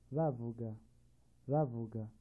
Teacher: A short, high tone.